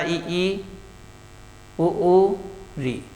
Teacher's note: जब मुख के खुलने की स्थिति बेटा न के बराबर हो उसे समवृत स्वर कहते हैं।